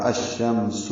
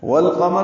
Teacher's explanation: الشمس میں لام نہیں پڑھا جا رہا، قمر میں لام پڑھا جا رہا ہے، یہ اظہار قمری ہے۔